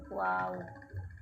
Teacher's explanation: Selanjutnya adalah makhrajnya waw, itu makhrajnya itu adalah di antara kedua bibir dalam keadaan terbuka